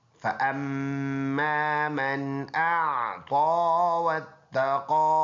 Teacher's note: میم مشدد ہے تو اس میں غنہ ہوگا بقدر ایک الف